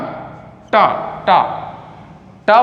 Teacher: ट वर्ग जो है निकलता है आपका मुर्धा से